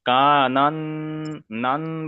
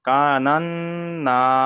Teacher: নুনের উপর তাজদিদ এসছে বলে গুন্না করা ওয়াজিব, ওই জন্য একালি পরিমাণ গুন্না করছি। আর একটা হলো আলিফের ডান দিকে যাবার এসছে আলিফ মাদ্দা, ওই জন্য একালি পরিমাণ টান দিচ্ছি।